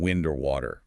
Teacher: In wind, though, that W is strong, voiced